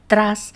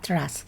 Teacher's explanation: un retraso, una posteriorización de la articulación de la R. En lugar de pronunciar tras, la pronunciación es similar a tras. · Hay un rasgo en la pronunciación de la R y en concreto del grupo consonante más R como TR, muy característico de algunos hablantes chilenos, que supone un retraso, una posteriorización de la articulación de la R